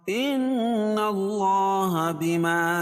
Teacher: اللہ کے لام سے پہلے زبر ہے تو اللہ کا لام پر پڑا جائے گا